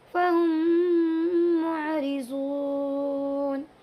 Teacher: यहाँ पर भी इस मीम के बाद यानी मीम साकिन के बाद दूसरा मीम आया हुआ है, इसीलिए इसमें इदगाम शफवी होगा और दोनों मीम को एक साथ मिलाकर गुन्ना के साथ पढ़ेंगे